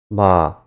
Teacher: this is a long a sound because the vowel is considered the phonetic end of the word